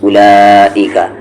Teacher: اولا واو silent ہے, silent ہی رہے گا ہمیشہ اس میں. اولئک مد کو یہاں 3 سے 4 حرکت کے ایکول کھینچیں گے